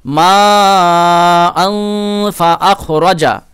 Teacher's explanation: মা আন, এখানেও 4 আলিফ টান হবে, মাদ্দে মুত্তাসিল। এখন এই যে তানবিনের পরে দেখেন ফা, ইকফার হরফ এসছে, তাহলে এখানে গুণনা করবেন